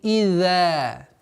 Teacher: Одна из самых распространенных ошибок это когда за произносится с давлением и появляется удвоение. Идза. Что является ошибкой.